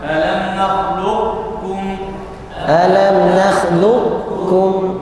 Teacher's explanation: Idgham naqis dia datang membaca sifat isti'la pada huruf qaf dan langsung membaca tasydid masuk ke huruf kaf.